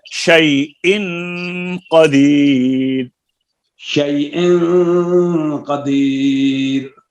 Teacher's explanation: شيء حمزہ کے اندر سختی ہے